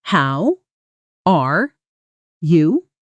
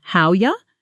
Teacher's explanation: spoken casually often sounds like how or even just howya. The R almost completely disappearing into the how before it